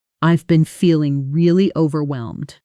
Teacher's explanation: Native speakers usually push extra weight onto really and overwhelmed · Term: natural stress pattern